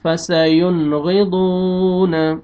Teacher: حروف حلقی میں سے غین آ رہا ہے، تو یہاں پہ آپ نے اظہار کرنا ہے، جلدی پڑھیں گے، آگے لاسٹ میں واو مد ہے، واو جزم سے پہلے پیش ہے، آپ نے ضاد کو کھینچنا ہے، فَسَيُنْغِضُونَ.